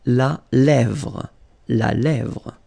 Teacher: La lèvre. Remember, accent grave here. Really open.